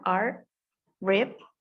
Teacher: Voiced alveolar central approximant.